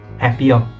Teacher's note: it is usually HYOU but with HATSU and the TSU before it become the P sound instead